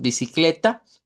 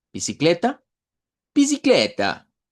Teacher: la A final la debemos hacer sonar como una a media para que se diferencie. Nosotros decimos bicicleta, pero en lengua portuguesa sería bicicleta.